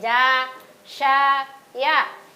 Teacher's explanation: huruf ja dan huruf sya dan huruf ya sama-sama keluar dari tengah lidah